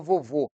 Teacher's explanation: a palavra vovô tem o último vô como sílaba tônica